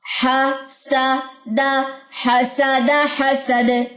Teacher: حسد bounce back محسوس ہوا ہے، یعنی کہ دال کی جزم پہ کلکلا ہوا ہے. کلکلا آگے چل کے پڑھیں گے، لیکن فی الوقت کے لیے بس یہاں پہ سمجھ لیجئے کہ آواز کے اندر ایک باؤنس بیک آپ کو فیل ہوا ہوگا، ایک وائبریشن سی.